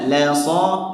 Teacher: La-nya tipis, so-nya tebal.